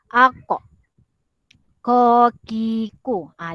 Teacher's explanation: kalau betul kamu akan rasa sebutan dia itu memang daripada pangkal lidah yang paling bawah, yang paling belakang ni. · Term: huruf qaf